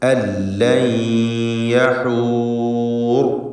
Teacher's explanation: ഇവിടെ സാക്കിനത്തായ നൂനിനെ യായിലേക്ക് ലയിപ്പിച്ച് മണിച്ചുകൊണ്ട് ഉച്ചരിക്കുക. ഇദ്ഗാം ബിഗുന്ന.